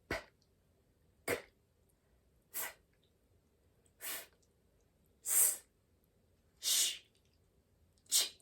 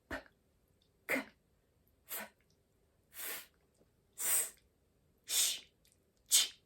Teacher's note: All of them are very quiet. It's just a little bit of air coming out of your mouth. It's not from your vocal cord.